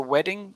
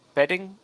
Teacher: you're saying a b instead of a w sound